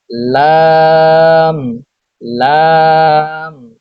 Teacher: জিহ্বার আগার কিনারা সামনের উপরের দাঁতের মাড়ির সঙ্গে লাগিয়ে উচ্চারিত হয় লাম